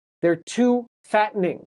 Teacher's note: So the T turns into a stop.